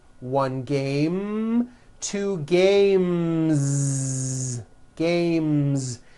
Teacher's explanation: the m sound m which is a voiced consonant so because of that when you add an S the S should also be voiced